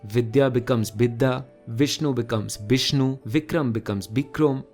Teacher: हिंदी या संस्कृत के व साउंड्स बंगाली में ब में ट्रांसफॉर्म हो जाते हैं।